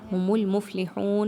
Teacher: ھم المفلحون میں دیکھیے تو میم کو لام کے ساتھ ملانا ہے، فا کو جزم لگا کے پڑھنا ہے اور ہلانا نہیں ہے